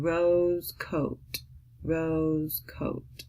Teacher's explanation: super super rounded right both rounded vowels there